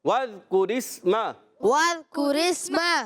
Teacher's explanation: را کے نیچے زیر آنے کی وجہ سے را باریک ہو جائے گی. را کو سین سے ملائیں گے، سین سیٹی کے ساتھ ادا ہوگا، باریک بھی رہے گا، ہلائیں گے نہیں.